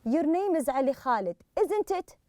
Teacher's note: so you rise at the end